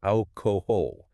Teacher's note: >> Ah, the terminal L. >> Yes, in Brazilian Portuguese, a terminal L is vocalized as a U sound